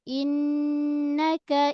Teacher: Pada nun sadu. Nun sadu gunnah dia gunnah akmal. Sama dengan mim sadu gunnah akmal. Dengung 2 harakat. Lama sikit. Dengung dia suara naik ke hidung.